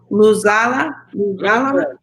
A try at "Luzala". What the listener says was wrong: Zala. You land here. You land here. You jump here. Here, land softly. Luzala. Be careful. There's no long vowel. Luzala. As soon as you put the long vowel, you pronounce the long vowel, it is a different meaning. I mean, it's different words. Very careful.